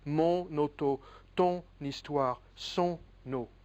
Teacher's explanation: you can use the N for linkage in the pronunciation and say mon auto, ton histoire, son eau.